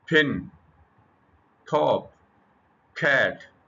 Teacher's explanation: you can feel strong puff of air · if you place your hand in front of your mouth while saying, अगर आप अपने मुंह के आगे अपना हाथ रखें जब आपके बोलें, फिन, टॉप, कैट, you can feel strong puff of air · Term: एस्पिरेशन, aspiration